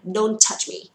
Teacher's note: Ở đây có âm T ở cuối chữ don't thì touch, chúng ta đọc là một âm thôi, không cần là don't touch me đúng không?